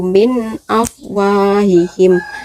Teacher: Nun mati bertemu dengan alif, di sini dibaca jelas. Nun mati bertemu dengan alif dibaca jelas atau idhar